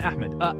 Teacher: Alif with Hamza starting vowel A. Ha, a deep throat H, not soft English H. Meme for the M sound.